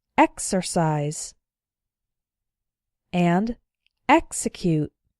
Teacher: Here are a couple more words where the X is followed by a vowel, but the strong syllable is not immediately after the X, so the X is pronounced ks.